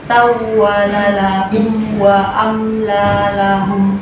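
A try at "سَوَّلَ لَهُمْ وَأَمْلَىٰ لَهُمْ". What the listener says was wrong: Oke, wawnya sedikit lagi, namrohnya. Jangan ditahan. Jangan seperti yang biasa, beda. Sawwa tambahin namrohnya ya.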